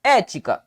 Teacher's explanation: Recaiu sobre a antepenúltima sílaba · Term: Proparoxítono